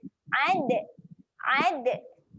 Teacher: Dal ketika mati sifat dia ada lantunan.